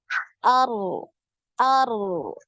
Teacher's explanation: Getarannya sekali aja takrirnya sekali. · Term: getaran sekali